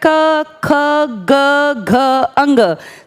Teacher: जब आप हवा को बाहर ला रहे हैं तो उस हवा प्राणवायु का प्रेशर गले पे बहुत ज्यादा है। दांतों पर प्रेशर नहीं है। क बोल के अगर आप देखेंगे तो पता चलेगा आपका सारा प्रेशर गले पर है। · जैसे पहली लाइन आपको बोलनी है क ख ग घ अड़ या अंग, तो बोलते टाइम आप महसूस करके देखिए, जब आप हवा को बाहर ला रहे हैं तो उस हवा प्राणवायु का प्रेशर गले पे बहुत ज़्यादा है, दांतों पे प्रेशर नहीं है। क बोल के अगर आप देखेंगे तो पता चलेगा आपका सारा प्रेशर गले पर है, कंठ पर है। क ख महसूस कीजिए बोलते हुए, क ख ग घ अंग, सारा प्रेशर जो हवा लगा रही है ना वो हमारे कंठ पर लगा रही है, तो इसीलिए इस लाइन का नाम पड़ गया ये कंठ है।